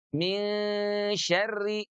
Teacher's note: Maka nun yang tadinya di ujung lidah sekarang bergerak ke tengah lidah. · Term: ikhfa